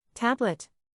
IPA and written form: ˈtæb.lət (Tablet)